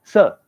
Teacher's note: British people say sir, no R. They don't pronounce R in the end.